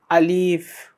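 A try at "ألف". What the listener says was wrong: আলিফ। এখন লক্ষণীয় বিষয়, ও কিন্তু আলিফটা টেনে বললো। আমি কিন্তু বলেছিলাম যে আলিফটা কিভাবে হবে, আলিফ এভাবে হবে, বুঝে গেছে? আলিফটা হবে তাড়াতাড়ি, আলিফে কোনো টান নেই, আলিফ এভাবে।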